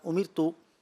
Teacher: امیرتو یہ را باریک ہوگا